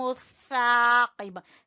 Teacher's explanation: زبان کی نوک اوپر والے سامنے کے دو دانتوں سے ٹکرائے گی تو سا ادا ہوگا